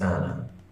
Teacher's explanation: as I start pronouncing the name Anna, I start with a glottal stop